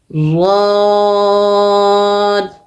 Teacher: जबान की करवट और ऊपर के दाढ की जड़ से द अदा होगा · زبان کی کروٹ اور اوپر کے داڑوں کی جڑ سے غاد ادا ہوگا